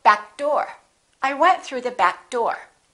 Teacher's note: Don't release that k. Just go back door.